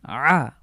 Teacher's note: অবশ্যই কন্ঠে চাপ দিতে হবে এটি হলো হলক থেকে উচ্চারিত হরফ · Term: কন্ঠবর্ণ